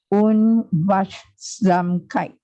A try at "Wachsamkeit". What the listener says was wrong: This is a K, Wachsamkeit.